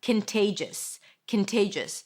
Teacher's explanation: pronounce it with a k sound at the beginning. A schwah and an n. Can there is no o. · Contagious. Here you pronounce it with a k sound at the beginning, a schwa and an n, kin, there is no o. Then te, that's the primary stress, kinte, and then jus, a jus sound, a schwa, and an s.